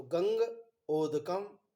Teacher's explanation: तो ओदौ तो कंठोष्ठम, ओ और औ इसका कंठ और ओष्ठ स्थान है